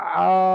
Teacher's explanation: এখানে আলিফ মাদ্দার জন্য এক আলিফ পরিমাণ টান হবে